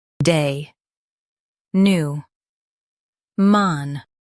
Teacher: stress new and keep man soft